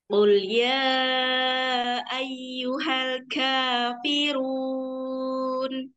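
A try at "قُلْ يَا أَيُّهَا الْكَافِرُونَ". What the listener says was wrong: Kafnya tidak diberi hamas. Bukan tapi biasa K, karena dia posisinya tidak sukun.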